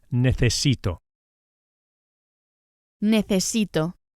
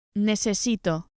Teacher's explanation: be sure to pronounce the C as an English TH.